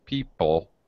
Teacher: it's an unstressed syllable so it's just a schwa sound